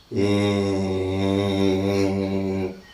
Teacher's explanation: but the vowel limit or height is just half open okay half open and un rounded